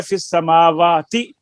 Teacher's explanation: تو یہ اب اپنے دماغ کے اوپر بھی ذرا زور ڈالے نا کہ ہم یہ لکھا ہوا ہے اس کو ہم نے وصل میں کیسے پڑھنا ہے. وصل میں حمزہ نہیں پڑھیں گے